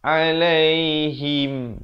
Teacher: Ha baris bawah kita bunyi hi. Kita tak bunyikan he ya. Kemudian bertemu mim jadi him.